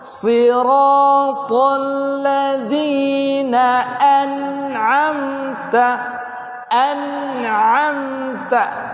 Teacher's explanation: Hamzah di bawah, ain di pertengahan. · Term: hamzah dan ain